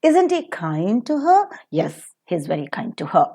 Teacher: the last interesting place where the falling tone is used is with the rhetorical questions